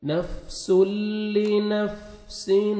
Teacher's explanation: उनके बाद तनवीन के बाद हरूफ यरमलून में से लाम आ रहे हैं, यहाँ पे इदगाम करेंगे बगैर गुन्ना के साथ।